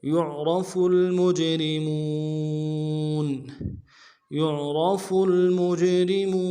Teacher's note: يعرف المجرمون، يعرف میں یا کو عین کے ساتھ ملانا ہے، عین کو موٹا ادا کریں گے، را کو موٹا ادا کریں گے